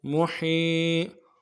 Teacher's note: حا کے بعد یا مدہ ہے، یعنی حا کو یا کے ساتھ جو ملا رہے ہیں کھینچیں گے اس کو